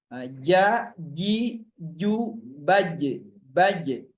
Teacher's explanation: ini ada pantulan hurufnya yang disebut dengan huruf qalqalah karena huruf qalqalah ada pantulannya.